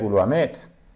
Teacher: here a secondary stress on lu and a primary stress on mit